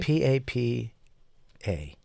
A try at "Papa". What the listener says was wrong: You're putting a UH on it, though.